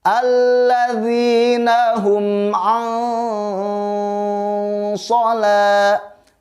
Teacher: Oke, alladzina hum an, ada nun mati bertemu dengan huruf so. Ketika ada nun mati bertemu dengan huruf so, maka hukumnya adalah ikhfa, bacaannya harus ditahan. Itu termasuk ke dalam ikhfa awsat, ikhfa yang pertengahan.